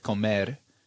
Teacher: And a lot of times I'll have kids tell me, like if I say the word comer, it's a very like drawn out pronunciation, but you'll hear the ra at the end of it is almost like a D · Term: single R